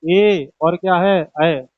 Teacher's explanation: ए और अय ये भी जीभ के आगे के हिस्से से बोले जाते हैं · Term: अग्र स्वर